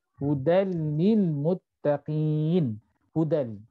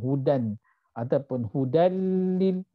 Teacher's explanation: Kena baca secara mudgham, idgham, tetapi tidak gunnah, tidak dengung. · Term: idgham tanpa dengung